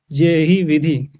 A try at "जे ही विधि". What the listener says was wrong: चारों की timing same है ना, जबकि होनी क्या चाहिए,